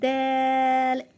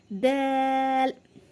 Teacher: ज़बान की नोक और दांतों की आगे वाले दांतों की जड़ से हम मिलाएंगे तो वहाँ से हमारा दाल अदा होगा